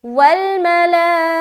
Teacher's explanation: والملائکۃ، واو لام زبر ول، میم زبر ما، لام کھڑا زبر اوپر مد لا، والملا، حمزہ زیر ای، کاف زبر کا، تا پیش تو. اب حرف مد کے بعد حمزہ اسی کلمے میں ہے لہٰذا مد متصل ہوگا تو 3 سے 4 الف کھینچیں گے. والملائکۃ، ایکۃ ایکۃ، اس کو بالکل جلد ادا کریں گے.